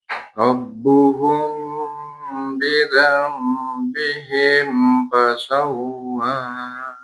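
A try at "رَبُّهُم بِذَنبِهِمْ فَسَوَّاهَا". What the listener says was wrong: Sawwaha. Bagus ya, gunahnya bisa dilamain lagi dan dilatih mana yang ditahan, mana yang nggak ditahan. Untuk mim tipsnya gampang banget. Kalau mimnya gundul 100% ditahan. Tapi kalau mimnya ditulis harokat sukunnya, berarti nggak ditahan. Ya, gampang kalau mim.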